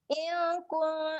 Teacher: in kat sini dia ada bacaan dengung.